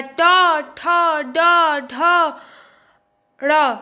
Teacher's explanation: मतलब जीभ जा करके हमारे तालु से और दांत के बीच में लगे, वहाँ पे मूर्धा आ जाता है। ट, ठ, ड, ढ, ड़, ये सभी हमारे मूर्धा के अंतर्गत आते हैं।